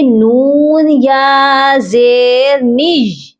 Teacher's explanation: یہاں پر ہم یا کو سختی سے پڑھیں گے، نون یا زیر نج، نون کو کھینچنا نہیں ہے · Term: یا مشدد